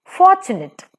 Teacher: For is stressed, tunate is unstressed. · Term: dactylic foot